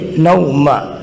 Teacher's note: حروف لین کو کھینچے بغیر شارٹ کٹ پڑھیں گے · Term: واو لین